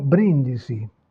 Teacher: En revanche, dans le mot brindisi toast, vous avez la première syllabe qui porte l'accent et là vous avez la consonne qui bloque l'allongement vocalique, donc pas d'allongement vocalique